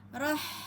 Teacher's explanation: pada ha sukun, kemudian kita keluarkan hak pada hamasnya. Rah, ya, alus, ya, ha pada tengah tenggorokan.